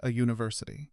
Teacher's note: It starts with the letter u, but say it out loud and you'll notice it actually begins with a y sound. U nect functions as a consonant sound.